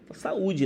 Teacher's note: esse assento É apenas para mostrar que esse U é forte que esse U tem força que esse U não é uma semi vogal e sim uma vogal